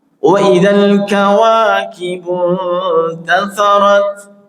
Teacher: Nah, ingat ya itu mad asli mad thabi'i. Waidal kawa panjangnya tidak lebih dua harakat.